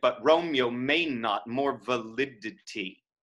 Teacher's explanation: you could elide romeo to two syllables